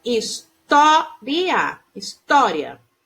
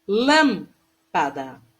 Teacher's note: proparoxítona e apresenta a sílaba tônica na antepenúltima